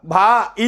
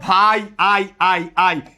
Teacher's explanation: এই আইটাকে বলে যৌগিক স্বরধ্বনি। কিছু কিছু স্বরবর্ণ আছে পাশাপাশি দুইটা বসছে, আলাদা উচ্চারণ করা যায় না, একটার মতো উচ্চারিত হয়, তাকে আমরা বলবো যৌগিক স্বরধ্বনি।